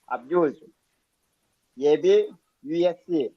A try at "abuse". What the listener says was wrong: Slow ఉంది, కావాలంటే చూసుకో సెకండ్స్. అబ్యూజ్ అన్నప్పుడు ABUSE అబ్యూజ్ అనాలా. టప్ టప్ టప్ టప్ అని లేసిపోతుండాలి బండి.